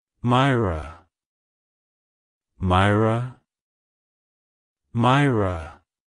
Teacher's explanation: To pronounce it correctly, emphasize the first syllable, my, and roll the r sound softly in ra